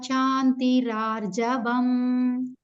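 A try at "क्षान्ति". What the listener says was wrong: Shanti ensure that you are going to emphasize on ksha. Sometimes we tend to pronounce it as shanti.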